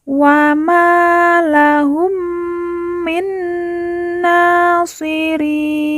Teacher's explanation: ri kita baca panjang 2, 4 atau 6 harokat karena di depannya terdapat huruf lin, yaitu huruf ya sukun sebelum huruf pemberhentian, yaitu di sini huruf nun.